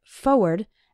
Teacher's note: when speaking fast we sometimes say it like forward as if there wasn't that first R